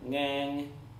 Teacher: So ngang is the even tone, and again, you notice it's kind of high.